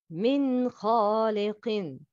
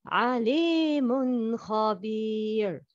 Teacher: Can you hear the sound of nun sakina? Yes, it's clear because it's followed by kha.